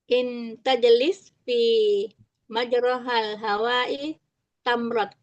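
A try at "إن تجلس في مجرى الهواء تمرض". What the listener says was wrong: Fi majra, bukan majroha. Majral.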